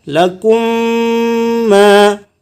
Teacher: Mim sukun ketemu mim. Ini masuk dalam kategori idgham mislain